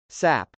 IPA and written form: sˈæp (sap)